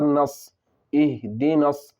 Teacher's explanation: الف اور لام دونوں کو نہ پڑھیں گے بلکہ بعد والے حرف سے ملا کر پڑھیں گے جیسے نون صاد زبر نص اہدنص، صاد کے نیچے زیر کی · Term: حروف شمسی